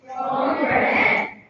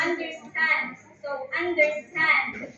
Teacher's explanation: two unstressed, then followed by one stressed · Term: anapest